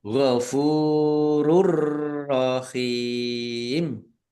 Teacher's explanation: Fa dumah wau sukun mad thobi'i panjang dua harakat.